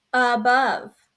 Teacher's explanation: The schwa is the most relaxed sound. The schwa can sound a little like a short U, sound, like at the beginning of the word above